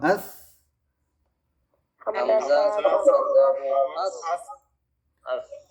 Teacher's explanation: জিহ্বার আগা উপরের দুই দাঁতের আগার সাথে লাগবে লেগে নরম বাতাস বের হবে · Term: ছা